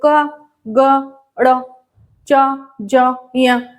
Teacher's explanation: वायु जो है वह अल्प मात्रा में बाहर आ रही है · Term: अल्पप्राण